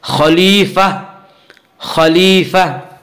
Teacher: وقف کرنے کی صورت میں گول تا ہائے ساکنہ بن جاتی ہے